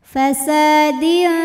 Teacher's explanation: Au fasa, sa matobi'i lohiri ya karena ada alif didahului fathah, maka sin panjang dua harokat.